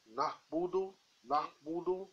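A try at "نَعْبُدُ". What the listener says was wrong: There is no Hamza here, so keep things simple. Nahbudu.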